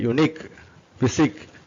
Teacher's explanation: அந்த இக்குன்னு சொல்றதை அழுத்தி சொல்லணும் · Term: ஸ்ட்ரெஸ்